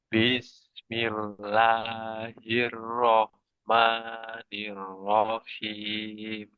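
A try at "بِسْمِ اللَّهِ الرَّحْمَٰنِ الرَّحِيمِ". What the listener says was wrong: Nah, di panjang dua harokatnya masih. Bismillahirrahmanirrahim. Namanya kelebihan. Lanya sudah pas. Jadi harus sama. La, ma, sama. Bismillahirrahmanirrahim.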